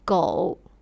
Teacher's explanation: Le son OU se prononce comme un O long.